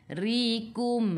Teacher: Ra baris bawah kena baca dengan nipis. Kita senyum.